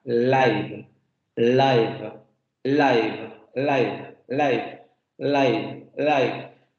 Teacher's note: va a pegar a los alveolos pero el aire va a salir por los lados de la boca